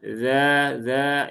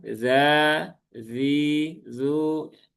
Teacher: kalau yang dzal itu dza dzi zu cenderung menurun dan ringan begitu ya